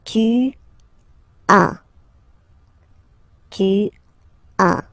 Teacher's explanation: As usual in French, final s is not pronounced.